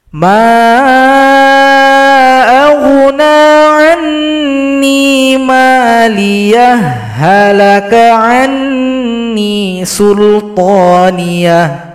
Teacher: kita baca lanjut tapi ditambahkan tasydid pada huruf ha. Namanya idgham mutamatsilain karena huruf ha sukun berjumpa ha yang berharokat.